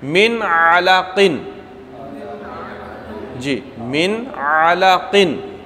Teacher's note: جو ہمارا مقصد مثال دینے کا کہ عین آ رہا ہے من کے بعد، علاقن کے اندر عین آ رہا ہے، تو یہ کس سے ہے؟ وسط حلق سے ہے